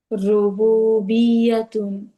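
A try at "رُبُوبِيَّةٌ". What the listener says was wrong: ইয়াতুন, টান হবে না আপু। রুবুবিয়াতুন।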